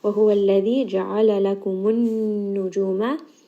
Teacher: Noon here has a shadda. Again, just bring this up into the nose and give it proper ghunna.